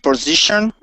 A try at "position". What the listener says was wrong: Okay, now make sure you use a short I sound there and say position.